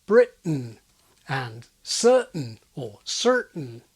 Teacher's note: Brits and Americans also happily use glottal T before syllabic N. That's where the consonant N forms an entire syllable without any vowel, as in Britain and certain or certain. · It's the absence of the explosive t release that makes people think of this T-glottaling as T dropping